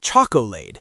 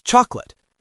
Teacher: The o and the a just disappear into the schwah.